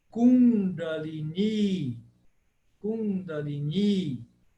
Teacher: o primeiro i é breve e o segundo i é longo ele tem um traço em cima por isso que se fala